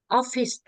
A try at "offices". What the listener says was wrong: Please remember to say the "es" at the end of the words. Offices. Offices. Es. Office as.